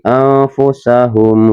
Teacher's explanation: mim sukun bertemu dengan huruf wa dibacanya jelas, makanya dinamakan idhar syafawi.